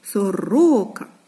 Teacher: Сорока на другий склад ось ми таким значком позначили що наголос падає на другий склад